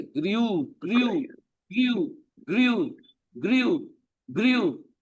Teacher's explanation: ग्री नहीं है, ई आवाज नहीं आनी चाहिए